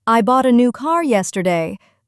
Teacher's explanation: in the sentence, I bought a new car yesterday, the word car receives the main stress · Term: sentence stress